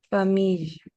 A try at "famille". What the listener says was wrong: Famille. Donc, c'est pas je, c'est pas le, c'est ya. Ya. Comme en anglais, you, y'all. On dit pas j'all, on dit pas lol, on dit ya, y'all, you. Donc, famille.